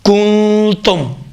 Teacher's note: تیسرا نقطہ، نون ساکنہ کی آواز بینی سے خارج ہوگی۔ چوتھا، نون ساکنہ اور اخفا دو حرکت کے برابر میں مقدار میں کھینچا جائے گا